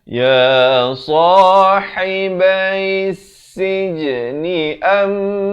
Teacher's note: mim sabdu dengungkan dua harakat